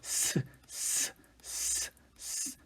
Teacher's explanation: 닿을락 말락 하게 만들고 그 사이를 공기가 빠르게 지나가도록 하면서 나는 소리죠 그 좁혀진 사이로 공기가 지나면서 그 마찰로 나는 소리라고 볼 수